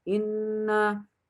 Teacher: Yang pertama guna karena nun tasdid dibaca dengan mendengung.